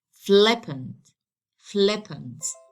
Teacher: This adjective consists of two syllables, since I have two vowel sounds, which are the E and the schwa here. So I have to stress the first syllable of this adjective